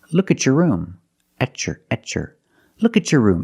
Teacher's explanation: when you have a t before a y in two separate words and you link the pronunciation of the two words you will hear the CH sound